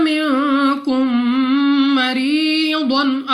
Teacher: میم ساکن کے بعد دوسری میم، ادغام میں شفوی کا قاعدہ ہے، یہاں پہ بھی غنہ کر کے پڑھنا ہوگا۔ را کے نیچے زیر، تو را کو باریک پڑھیں گے اپنی آواز کو نیچے گرا کر۔